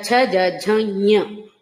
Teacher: అది అంగిలిని నాలుకని తాకిస్తూ పలకాలన్నమాట. నాలుక అంటే టిప్ కాదు, పైన తగిలిస్తూ పలకాలి · ఇది మన అంగిలికి నాలుకని తగిలిస్తూ ఞ అని వస్తుంది. ఇది ఎక్కువ ఉచ్చరించడం కష్టం కాబట్టి అందరూ ఎక్కువ పలకరు. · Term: చ వర్గానికి